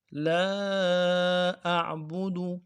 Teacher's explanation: میں جو عین ہے اس کو واضح نکالنا ہے